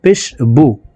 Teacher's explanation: বার উপরে শুধু পেশ হারকত আছে তো ঠোট গোল করে দ্রুতভাবে তাড়াতাড়ি করে পড়তে হবে